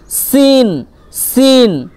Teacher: জিভের আগা, হ্যাঁ, নিচের সামনের দাঁতের আগার সাথে লেগে